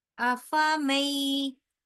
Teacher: नून को साइलेंट करते हुए हम लोग डायरेक्ट जाके मीम को या के साथ मिलाएंगे